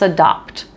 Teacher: it can be a little bit hard to hear this P before the T but if you think about what your mouth is doing your lips come together for adopt before you do the sound and of course if